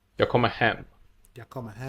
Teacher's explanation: The first two words are just kind of rushed through.